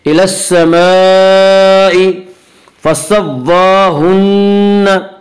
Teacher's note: खड़ा ज़बर को एक अलिफ के बराबर खींच कर पढ़ेंगे। हुन्ना नून मुशद्दद गुन्ना होगा और गुन्ना की मिक़दार 1 अलिफ है।